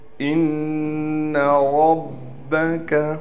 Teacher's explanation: نون مشدد ہونے کی وجہ سے نون میں غنہ کیا جائے گا، ایک الف کی مقدار غنہ کہتے ہیں، ناک میں آواز لے کر جائیں گے ایک الف کی مقدار